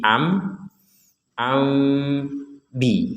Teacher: seakan-akan kita akan mengucapkan huruf mim tapi ternyata yang keluar huruf ba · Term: iqlab